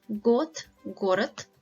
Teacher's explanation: D at the end of the word is pronounced as T sound